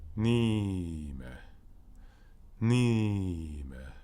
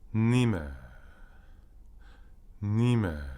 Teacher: Me võime pikendada teist silpi ilma, et sõna tähendus moonduks. Pane hästi tähele, me võime teist silpi pikendada, aga mitte mingil juhul rõhutada.